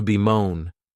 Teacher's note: this verb has 2 syllables, and the stress is on that second syllable